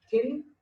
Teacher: the tongue is coming in between both the teeth, so it is called dental sound